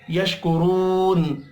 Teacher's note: مدہ ہے، ایک الف کے برابر کھینچ کر پڑھیں گے، یشکرون، را کو پیش کی وجہ سے پر پڑھیں گے ، واو مدہ کو ایک الف کے برابر کھینچ کر پڑھنا